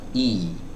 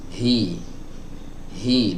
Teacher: Start awalnya pita suaranya tertutup dulu baru kemudian dibuka. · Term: huruf hamzah